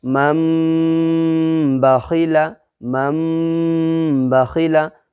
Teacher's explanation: نون ساکن کو میم سے بدل دیں گے یا تنوین کو میم سے بدل دیں گے اور اخفا کے ساتھ پڑھیں گے۔ ہم یہ قاعدہ پڑھے تھے، اس وجہ سے یہاں پر اسی طریقے سے ہم پڑھیں گے۔